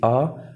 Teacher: पश्च स्वर यानी कि हमारी जीभ जो पीछे करके जो आवाज़ निकलती है